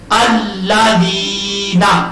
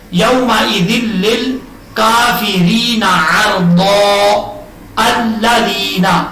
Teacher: الف کو ہم حمزہ بنائیں گے اور حمزہ کو زبر کے ساتھ پڑھیں گے. نہ ہی زیر کے ساتھ پڑھیں گے اور نہ ہی پیش کے ساتھ، زبر کے ساتھ پڑھا جائے گا.